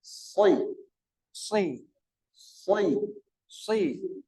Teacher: Maka cara membacanya adalah dengan memberikan tebal di bagian awalnya, lalu di akhir tipis. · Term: tafkhim awalan